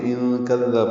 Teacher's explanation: نون ساکن کے بعد کاف آنے کی وجہ سے اخفا ہے. کاف دال نرمی سے پڑھیں گے.